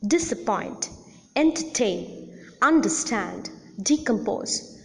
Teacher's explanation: the first syllable in all these words receives the secondary accent